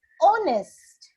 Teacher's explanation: the sound of H is not there